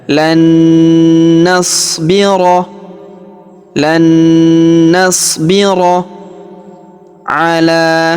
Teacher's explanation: Huruf la kita panjangkan 2 harokat karena terdapat alif kecil di atasnya dan terdapat alif bengkok atau alif maksurah di depannya yang ini ya.